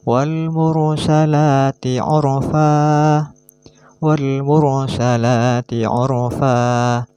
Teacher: Jadi harus dibaca tafkhim atau tebal apabila ra mati didahului harokat dhammah atau jatuh setelah harokat dhammah.